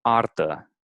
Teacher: It's like a rolling R. It is a rolling R, but not. It doesn't roll too much, like in Spanish, for example. It Okay. rolls sometimes.